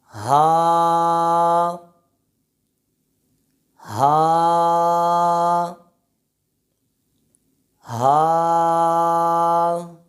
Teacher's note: حرف ہا کا مخرج یہ ہے کہ یہ حرف حلق کے نیچے والے حصے سے ادا ہوتا ہے۔ یہ حرف ہا اور حرف حا، یہ دونوں حروف قریب الصوت یعنی ملتی جلتی آواز والے حروفوں میں سے ہے۔